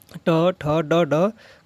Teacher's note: ट ठ ड ड का उच्चार स्थान कहां से होता है मुर्धन्य से होता है